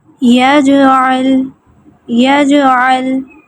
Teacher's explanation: اس پہ بہت زیادہ قلقلہ نہیں کیا گیا، یجعل یا یج یوں کر کے نہیں، ٹھیک ہے، یجعل مناسب سا اس پہ رکھا گیا۔ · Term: قلقلہ صغریٰ